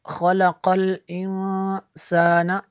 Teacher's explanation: حمزہ نون زیر ان، نون الف زبر حمزہ نون زیر ان، سین الف زبر سا، نون زبر نا، خلق الانسان، انسان یہاں پہ اخفا ہوگا، نون ساکن کے بعد سین حروف اخفا میں سے ہے